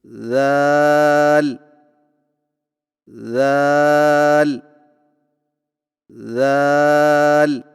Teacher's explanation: ذال کی ادائیگی میں زبان کی نوک کو سامنے والے اوپر کے دو دانتوں کے اندرونی کناروں سے نرمی سے لگا کر باریک آواز میں پڑھیں